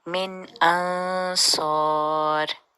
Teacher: من نون کا پورا اظہار کریں گے، نون کی جگہ پہ زبان کا نون کا جو مخرج ہے وہ ادا ہوگا